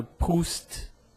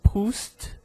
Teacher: Proust, eu pronuncio o T, esse T mudo, né? Sem um som vocálico em seguida, o T, apenas